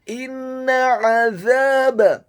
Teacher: huruf nunnya ditasydidkan dengan gunnah atau dengung seperti mat atau panjang 2 harokat. · huruf alifnya dibaca tipis, tarqiq, kasrah, 1 harokat.